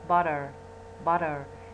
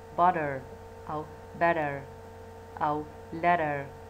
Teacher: يصير صوت الت يصير بين الت والد لا هي د واضحة ولا هي ت واضحة صير in between وأكثر شيء مائلة إلى لفظ صوت الد butter